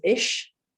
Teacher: there are parts of Germany where the word for I is ish, and the CH might come out as more of a sh sound. And there are other parts of Germany where it's more of a k sound, so like ik.